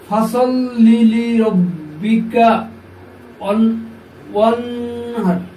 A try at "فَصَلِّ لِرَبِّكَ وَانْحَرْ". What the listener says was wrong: মাশাআল্লাহ।